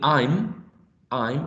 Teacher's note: which is a voiced bilabial nasal sound.